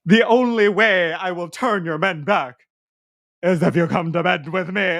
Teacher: her little vocal tics of like not doing all of her rhotic R's